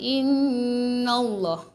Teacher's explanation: kalimah Allah tebal lah sebab sebelum kalimah Allah ni baris atas kan, dia akan jadi lam tafkhim kat sini.